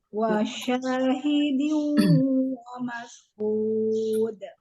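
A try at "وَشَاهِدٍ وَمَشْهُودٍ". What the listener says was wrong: Nah, ini agak kurang shinnya lagi. Wa mash.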